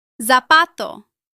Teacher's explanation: In much of Spain, Z is pronounced like the TH sound in the English word think. Both pronunciations are correct.